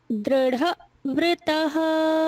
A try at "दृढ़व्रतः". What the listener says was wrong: दृढ़ को अलग नहीं करिए, वा के साथ लीजिए। दृढ़व्रतः